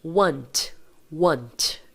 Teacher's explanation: Está vendo que o último som que a gente produz é o T, certo? E não é ti, é T.